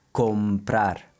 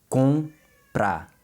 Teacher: Lips never touch when you say the com.